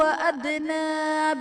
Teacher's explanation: دال حرف قلقلہ ساکن ہے یہاں بھی قلقلہ خوب ظاہر کریں گے